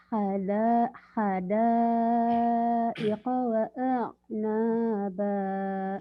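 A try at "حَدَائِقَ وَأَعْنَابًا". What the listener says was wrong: iya ainnya belum kena ya. Hadaika wa a'naba. Ainnya belum kena tuh berarti. Oh jadi hadaika Hadaika biasa aja jangan digituin kan kopnya hidup. Hadaika wa a'naba. Iya nanti tinggal ainnya tinggal dilatih. Hadaiqa wa a'naba.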